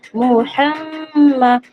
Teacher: মিমের উপর যেহেতু তাসদিদ আছে, তাই এটা মিম মুসাদ্দাদকে এখানে গুণনা করে পড়তে হবে। এটা ওয়াজিব গুণনা, একালি পরিমাণ গুণনা হিসাবে পড়তে হবে। · মিমের উপর পেশ, তারপর হায়ের উপর জবর, মিমের উপর জবর, এগুলা যেহেতু হারাকাতের অক্ষর, তাই এখানে টান না দিয়ে তাড়াতাড়ি পড়তে হবে। আর মারুফ পড়তে হবে, মাজহুল পড়া নিষেধ।